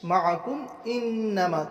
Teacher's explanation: معکم انما کم کاف میم پس کم اس میں اخفا نہیں کریں گے بلکہ اظہار کریں گے. میم ساکین کے بعد حروف حلقی میں سے حمزہ آ رہا اس لیے ظاہر کر کے پڑھیں گے. انما میں گناہ کریں گے.